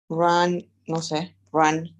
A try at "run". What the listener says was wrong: Run, run, right? Es decir, la A está un poquito más pronunciada, right? En realidad, la primera que que sería con U, es como run, como que cerrada, right? Run.